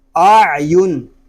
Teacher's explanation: عین حلق کے درمیان والے حصے سے ادا ہو رہا ہے، حلق پر زور دے کر اس کو ادا کریں گے